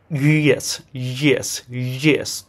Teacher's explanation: তখন দেখবেন direct ইয়েস উচ্চারণটা আসে না সাধারণত একটা হালকা জ এর মত টাচ চলে আসে